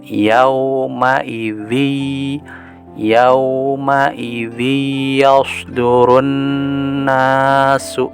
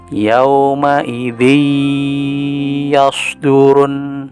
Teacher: jadi tanwinnya menghilang lalu dileburkan ke hurufnya dan sedikit ada gunanya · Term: Idgham Bighunnah